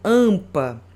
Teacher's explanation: Fonemas vocálicos nasais. Que o som sai pelo nariz.